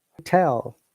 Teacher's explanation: We stress in a different place. When it's noun, we stress on the second part, hotel. When it is verb, we stress on the first part, hotel.